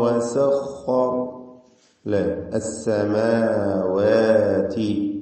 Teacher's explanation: മൻ ഖലഖസ് സമാവാതി വൽ അർദ് വസഖറ ലസ്സമാവാതി, വാവ് എപ്പോഴും നാം സൂചിപ്പിക്കാറുണ്ട് രണ്ട് ചുണ്ടുകളിൽ നിന്ന് വരേണ്ട അക്ഷരമാണ്.